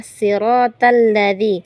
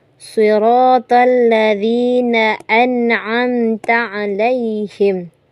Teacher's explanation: siratal ini shad yang diganti dengan sin.